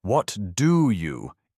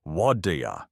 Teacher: It has to connect what do you into whadia. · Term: linking